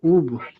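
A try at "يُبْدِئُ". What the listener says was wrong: ইয়া বাপের উব হবে না, ইয়া বাপের ইউব। ইউব।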